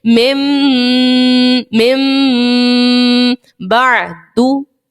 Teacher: غنہ ہم کر رہے ہیں, دیکھیں ناک میں آواز جا رہی ہے, ناک کے بانسے سے آواز نکل رہی ہے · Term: اقلاب